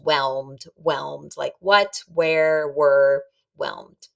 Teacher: WH is really pronounced these days like W.